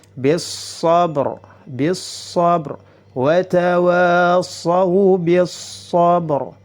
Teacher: Huruf shad ini termasuk salah satu huruf syamsiyah, maka lamnya dimasukkan ke dalam huruf shad dan lamnya dileburkan, langsung masuk ke huruf berikutnya · ba-nya memiliki sifat qalqalah, jadi harus dipantulkan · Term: lam syamsiyah